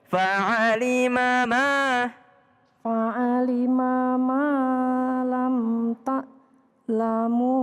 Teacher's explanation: Ma yang pertama pendek, ma yang kedua panjang.